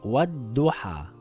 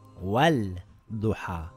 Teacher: The lam becomes silent and it will read wad-duha and not wal-duha. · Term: sun letter